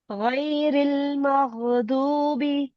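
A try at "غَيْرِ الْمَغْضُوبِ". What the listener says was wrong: جی ضاد کو اور موٹا کریں. مغضوبی.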